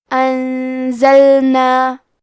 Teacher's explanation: کلمت انزلنا میں نون ساکن ہے، پھر حرف زے ہے. زے حروف الاخفاء میں سے ہے تو ہم یہ حکم کو غنہ کے ساتھ ادا کریں گے